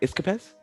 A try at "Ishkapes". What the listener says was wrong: Ishkapes. Yeah, ish, like with the ish at the beginning. you know, just a little ish.